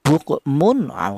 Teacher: Yang benar tanwin ini dibaca idhar atau tanwin ini dibaca jelas